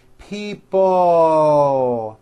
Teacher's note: it's not pronounced people with your tongue not moving it's people with your tongue slowly moving up and your jaw remaining down stretch out that l sound